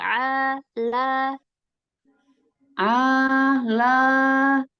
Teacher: A-nya bersihkan dari suara hidung